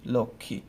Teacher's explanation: ঠিক আছে, আমরা যদি আরেকটা এক্সাম্পল দেখি, আমরা যদি বলি লক্ষ্মী, লোক, ক্ষীয়, লক্ষ্মী, তাই না, এই যে ক্ষীয় যুক্তবর্ণ, যেহেতু যুক্তবর্ণ আছে তাই আমার এখানে কি হবে না, ময়ের উচ্চারণটা হবে না